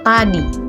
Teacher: vokal I tinggi atas depan tak bundar pada kata tadi.